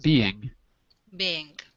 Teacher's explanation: so you just swallow the G